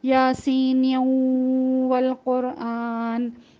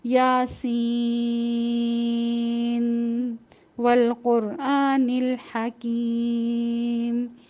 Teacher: غنے کے حروف ہونے کے باوجود ادغام نہیں کیا جائے گا۔ اور دوسری اس کی جو مثال ہے وہ نون، نون والقلم، ٹھیک ہے، نون کے بعد بھی واو آ رہا ہے، اس کو بھی ہم اگلے حرف سے نہیں ملائیں گے بلکہ ظاہر کر کے پڑھیں گے، ٹھیک ہے۔